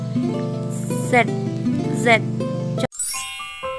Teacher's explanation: Huruf Z termasuk dalam bunyi alveolar, yaitu ujung lidah mendekati gusi seperti huruf S, tapi pada getaran pada pita suara.